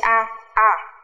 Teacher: Âm này khi đọc chúng ta sẽ mở mồm tương đối rộng, đọc nó sẽ hơi giống nửa a nửa e một chút. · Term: âm e bẹt